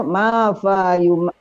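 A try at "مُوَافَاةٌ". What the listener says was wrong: Kenapa mim? Wau bukan mim.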